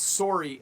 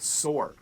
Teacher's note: the word sore and the word sorry have the same O sound when we pronounce them in Canadian English